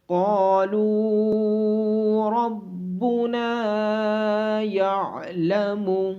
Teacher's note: قاف کو موٹی آواز کے ساتھ پڑھا جائے گا، اور الف مدہ ہونے کی وجہ سے قاف کو لمبا کیا جائے گا۔ · لام کے بعد واو مدہ ہونے کی وجہ سے لام کو لمبا کیا جائے گا۔ نون کے بعد الف مدہ ہونے کی وجہ سے نون کو بھی لمبا کیا جائے گا۔ عین کو گلے کے درمیان سے ادا کیا جائے گا۔